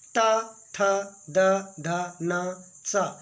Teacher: ये दंता, दांत से टकराते हुए ये वर्ण निकलते हैं